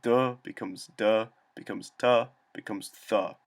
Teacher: the aspirated voiced plosives of Proto-Indo-European first became unaspirated voiced plosives, then unaspirated unvoiced plosives, and then unaspirated unvoiced fricatives. This means that duh becomes ta, becomes th. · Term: Grimm's Law